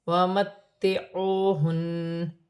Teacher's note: نون مشدد میں غنہ ہوگا، وقف کی صورت میں زبر گر جائے گی اور نون ساکن ہو جائے گی